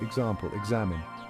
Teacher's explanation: word it often sounds like gz check this out example examine did you hear the gz sound in the middle it's a softer buzzing sound compared to the sharp KS